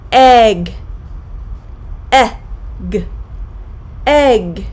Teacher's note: tips the short e sound is a relatively relaxed vowel sound the middle of the tongue rounds slightly upward and the sides of the tongue may lightly touch both the top and bottom side teeth the lips and jaw are loose and relaxed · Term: short e vowel sound